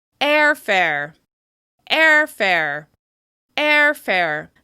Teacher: the first syllable is stressed because it's longer, louder, and higher in pitch, with extra clear mouth movement